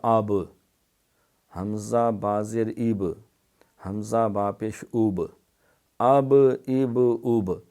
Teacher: اب ہماری آواز رکتی ہے آب، یہ ہونٹوں کے اوپر جا کے تو پتہ چلا کہ با کا مخرج جو ہے وہ ہونٹ ہے، یہ ہونٹوں کا جو تری والا حصہ ہے